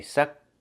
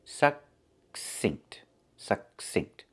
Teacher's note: The K is a stop K. We don't release it. We don't say k.